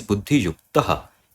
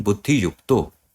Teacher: So right off the bat, we can see this Buddhi Yukto, and we already know that the main pada, the original pada is Buddhi Yuktaha, and due to Ukara Utva Sandhi, this Visarga Yuktaha, this is changing into U, which is further changing into O. So Buddhi Yuktaha, this is becoming Buddhi Yukto.